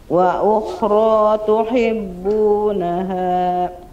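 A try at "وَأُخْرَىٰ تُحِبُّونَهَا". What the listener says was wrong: Hanya ditipisin lagi. Tuhi, tuhi, turunin rahangnya. Wa ukhra tuhibbunaha.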